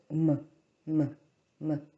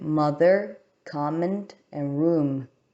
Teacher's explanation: First, we have the bilabial nasal stop, which is the sound m, m, m.